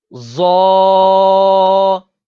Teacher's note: اس حرف کو بھی حروف مستعلیہ ہے، پر یعنی موٹا پڑھیں گے اور اس کے اندر بھی واؤ کو شامل نہیں کرنا